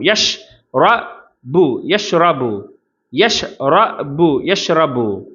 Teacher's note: ரால தஃப்ஹீம். அப்போ வலிமையாக உச்சரிக்கணும்.